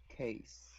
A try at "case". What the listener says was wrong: Case. Very good.